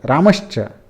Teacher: तो स का श में परिवर्तन हो जाता है।